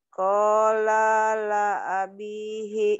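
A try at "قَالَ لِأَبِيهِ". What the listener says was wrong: Li ali ali ali ali a. Bukan la a. Qala li abihi.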